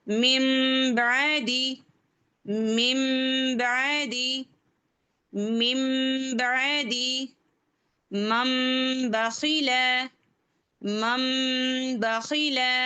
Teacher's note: یعنی کہ اچھے سے سمجھ لیں کہ نون نہیں پڑھیں گے، میم کو لے لیں گے